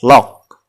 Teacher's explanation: Namun dengan menyesuaikan nada atau intonasi ketika menyebutkannya ya. Ketika hanya disebutkan dengan nada mendatar seperti lock, maka bentuknya tidak akan menjadi perintah. Sehingga kita perlu meninggikan sedikit intonasi.